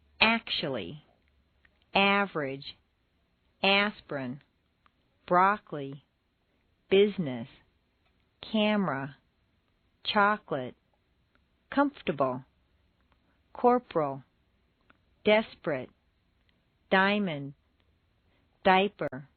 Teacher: Some longer words that are stressed on the first syllable squeeze weak syllables right out. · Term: Squeezed out syllables